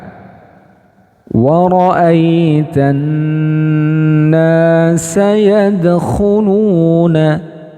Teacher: gunah musyaddad ya kemudian Mad thii jadi cara membacanya adalah pertama lam sukunnya dileburkan ke Nun ya kemudian Nun tasdidnya didengungkan selanjutnya nanya dibaca panjang satu Alif secara Mad thii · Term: alif lam syamsiah